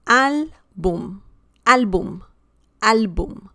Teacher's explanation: We have the stress on the second to last syllable, and the word ends in M.